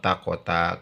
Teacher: hanya satu harkat Fi fiainil taqota ketika wasol ya laf kkota dibacanya dengan izhar dan jelas ya Kenapa karena alif lam bertemu dengan Ta